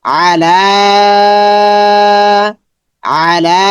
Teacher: লাটা লম্বা হবে, লামের উপর খাড়া জবর আছে, এখানে ইয়াটা খালি হরফ, পড়তে হবে না।